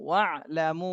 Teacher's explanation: মুতে 3 আলিফ টান দিতে হবে